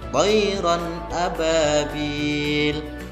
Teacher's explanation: Cara membacanya huruf tanwinnya dibaca dengan jelas, tidak boleh mendengung. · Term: izhar halqi